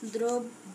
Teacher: শব্দের প্রথমে অযুক্ত রফলা থাকলে সেক্ষেত্রেও আমরা দেখি যে আদ্য এর উচ্চারণ সাধারণত ওকার হয়ে থাকে